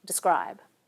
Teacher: The vowel in the first unstressed syllable gets reduced, and we say describe. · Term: vowel reduction